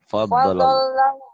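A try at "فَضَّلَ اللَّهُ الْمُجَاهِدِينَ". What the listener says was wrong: Kurang nyambar. Fadlallah. Fadlallahul mujahidin. Nyambar semua.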